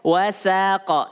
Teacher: Wa tipis, sin tipis, qaf tebal. Jangan sampai sinnya terpengaruh dengan qaf. · Sa tipis dulu baru masuk huruf qaf yang tebal.